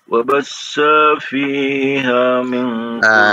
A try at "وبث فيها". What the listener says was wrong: Sa-nya pendek. Wabassa fiha.